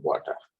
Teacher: The R sound will remain silent, so it will be water.